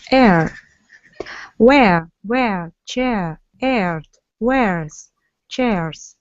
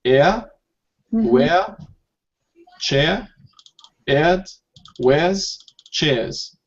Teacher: And the American, because of the R, it would be obvious. You can hear the R in the American standard.